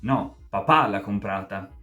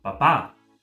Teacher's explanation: con questo accento più forte, con questa intonazione particolare, mettendo quindi un po' più di enfasi sul soggetto, usando semplicemente il vostro tono di voce.